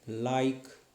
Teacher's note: the lateral parts of the tongue will move towards the alveolar ridge